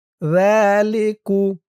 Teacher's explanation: জিহ্বার মাথা উপরের দাঁতের মাথার সাথে লাগবে জালের উচ্চারণটা করার সময়।